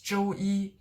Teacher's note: Notice I'm not saying 周一. It's 周一 flat throughout.